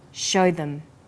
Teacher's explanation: show is stressed and them is unstressed so we say show them this is vowel and consonant linking